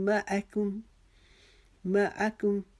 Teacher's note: کاف کو ہم نے باریک پڑھنا ہے, میم کو ہم نے باریک پڑھنا ہے, اور آگے میم مشدد آ رہی ہے, اس کے ساتھ ہم نے اس کو ایک الف کے جتنا رک کے پڑھنا ہے